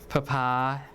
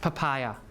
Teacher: The stress is here. So the first P is unaspirated P, and then pa is stress, okay?